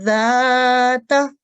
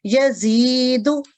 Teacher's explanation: یہ ذال کی آواز نرم ہوتی ہے، یزید، یہ زا کی آواز ذرا شارپ ہوتی ہے · پھر ظالمتن، تو یہ زو جو ہے یہ موٹا یعنی مفخم ادا ہوگا، جبکہ پہلے والا ذال اور یزید کا جو زا ہے یہ ترقیق ادا ہوں گے، یعنی باریکی کے ساتھ